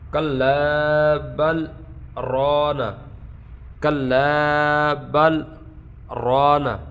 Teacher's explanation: درمیان میں تھوڑا سا آپ نے رکنا ہے، سکتہ کرنا ہے، سانس نہیں توڑنا ہے